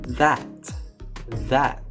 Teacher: In the second example that the th sound is produced by putting your tongue between your feet and using your vocal cords meaning your vocal cords vibrate when you say it